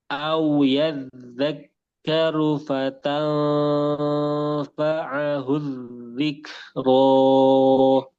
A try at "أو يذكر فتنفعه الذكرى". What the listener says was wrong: Kepanjangan. dua harokat. Ro.